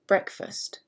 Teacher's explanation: in the word breakfast this is a two-syllable word and the emphasis is on brick